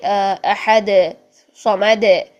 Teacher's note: دال کو پڑھ رہے ہیں لیکن اس کے اوپر حرکت نہیں پڑھنی ہے، تو ہم اس کی آواز کو ہلا کے پڑھیں گے